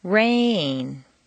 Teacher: Make rain very musical and put it on 2 notes.